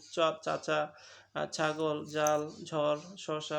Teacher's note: একবারে উপরের পাটিটা উপরের অংশটা মুখের যেসব ব্যঞ্জন ধ্বনি উচ্চারণের সময় জীবের ডগে খানিকটা প্রসারিত হয়ে তালুর কাছে বায়ু প্রভাবে বাতাস সৃষ্টি করে সেগুলোকে তালব্য ব্যঞ্জন বলে যেমন চাচা ছাগল জাল ঝড় শসা প্রবৃতি